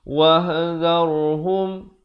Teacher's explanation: Ahum, izhar syafawi, jangan pula dipanjangkan. Wahdharhum, ra-nya dibaca tebal. Wah, ha pedas. Dharhum, izhar syafawi.